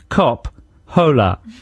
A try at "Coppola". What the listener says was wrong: Yeah, you don't pronounce the H, of course. Coppola.